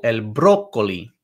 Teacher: The accent makes you emphasize that first syllable